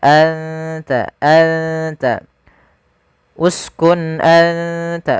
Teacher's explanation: makhraj daripada huruf ta sendiri makhrajnya adalah ujung lidah kita. Ujung lidah menempel dengan gusi atas kita atau apa? Perbatasan antara gusi atas dengan gigi seri atas.